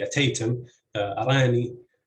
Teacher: the word begins with a CV syllable that has a glottal stop onset and a long vowel, and in this case, stress falls on the second syllable